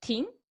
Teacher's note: Here only the tongue and teeth come in contact. The tip of the tongue articulates with the back or bottom of the top teeth. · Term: dental sound